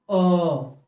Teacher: कंठ्योष्ठय वर्ण यानी जिसका उच्चारण कंठ से और ओठ से दोनों से होता है